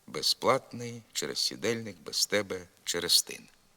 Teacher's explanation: при швидкому темпі мовлення приголосний з у без і через здебільшого оглушується безплатний через сідельник без тебе через тин звук з у префіксі